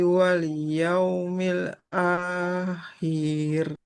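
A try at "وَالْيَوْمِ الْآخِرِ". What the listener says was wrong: Kok-nya nggak boleh panjang. Kasroh tidak bertemu ya. Wal yaumil akhir.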